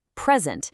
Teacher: Stress that first syllable, present, and you've got a gift. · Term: word stress